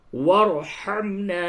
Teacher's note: ہے، یہ را باریک ہوگی، واغفر لنا وارحمنا، اس جگہ پہ را ساکن سے قبل زبر ہے، یہ پر ہوگا